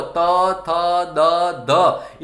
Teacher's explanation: મોઢાનો અંદર જે ભાગ તમે જુઓ, હવે તમે જ્યારે ત, થ, દ બોલો છો ત્યારે જીભનો જે અગ્રભાગ છે એ ઉપરના કે પાછળને ટાળવે અડતો નથી. એ જીભનો અગ્રભાગ છે એ ઉપરના દાંતને સ્પર્શ કરે છે અને જે નીકળે છે એને દંત વ્યંજન કહેવામાં આવે છે.